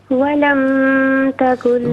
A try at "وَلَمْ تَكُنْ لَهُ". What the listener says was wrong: ولم پہ میم پہ غنہ نہیں ہوگا، ولم تکن لہو،